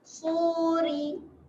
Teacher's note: Ri ni adalah ra yang nipis. Senyum saja.